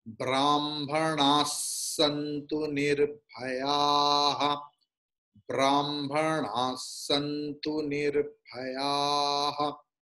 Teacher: So Brahmanaha, Visarga is changing into Sakara because Santu is there afterwards. Visarga के बाद संतु है, इसलिए विसर्ग की उच्चारण सकार हो जा रहा है.